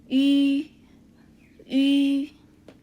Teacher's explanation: เราออกเสียงอีแต่ทำปากอู